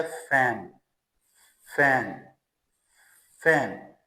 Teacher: थोड़ी सी विसल जैसी आवाज निकलती है जब इस साउंड को हम प्रोड्यूस करते हैं।